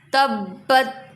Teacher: با پر جماؤ کریں گے، تشدید آ رہی ہے تو جماؤ کریں گے